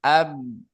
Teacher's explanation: Ah ab kalau kita sukunkan ab, maka si bibir itu sedang menempel ke bibir atas menempel ke bibir bawah. Artinya makhraj huruf ba. Ab gitu ya.